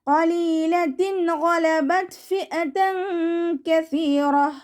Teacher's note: ഗൈനിൻ്റെ മഖ്റജ് വരുന്നത് നമ്മുടെ അദ്നൽ ഹൽക്കാണ്. തൊണ്ട തുടങ്ങുന്ന ഭാഗത്തു നിന്നാണ് ഗൈന് പുറപ്പെടുന്നത്.